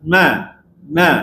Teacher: dia kena ada suara di hidung tu